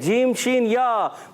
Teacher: वस्ते ज़बान, वस्ते तालु, यानी ज़बान का दरमियानी हिस्सा, तालु का दरमियानी हिस्सा